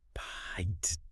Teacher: Because it looks like mint or hint, your brain wants to use a short I sound. But historically, the vowel shifted and it now demands a long I diphthong. Pint. Yes, you have to glide from an ah sound to an ee sound.